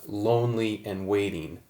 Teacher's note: the syllables loan and weight are stressed in their respective words while Lee and in are unstressed in those same words